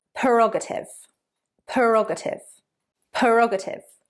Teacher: 4 syllables. Stress on the second syllable.